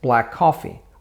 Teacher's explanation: One sound, and the end of black merges with the first part of coffee. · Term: connected speech